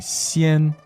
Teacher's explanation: And then the next word, 先 X-I-A-N, first tone.